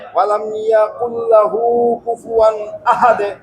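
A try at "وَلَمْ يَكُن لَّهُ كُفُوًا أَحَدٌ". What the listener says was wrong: মাশাআল্লাহ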